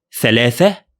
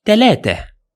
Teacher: this one is equivalent to the unvoiced (th) sound in English in spoken Arabic we use to convert it into ت